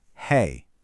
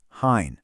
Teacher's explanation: Listen, the singular is hai, nice and clean. But, the plural, with the bindi, gets this nasal sound at the end, hain